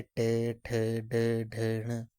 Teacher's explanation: जब जीभ की उल्टी हुई नोक का निचला भाग मूर्धा से स्पर्श करता है, ऐसी स्थिति में उत्पन्न ध्वनि को मूर्धन्य व्यंजन जो है वो कहा जाता है। तो जैसे इसके एग्जाम्पल आ गए आपके ट ठ ड ढ ण।